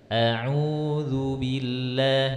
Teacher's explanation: usahakan du-nya jangan terikut ke hidung, bukan a'udzu, bukan lu tapi du biasa.